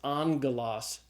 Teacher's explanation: the first gamma is pronounced as a gamma nasal as an n sound